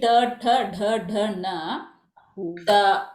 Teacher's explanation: your tongue bending towards the murda will be more towards na, and it will be least towards ta.